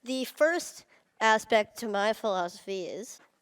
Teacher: 그 명사를 강조를 하고 싶다 그럴 때는 힘줘서 the라고 올려주면서 그 다음 단어들을 발음을 해주시면 됩니다